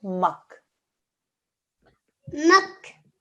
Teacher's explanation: Because this is not a noon, because this is not a mim, there is no nasal sound. We just do the simple mak.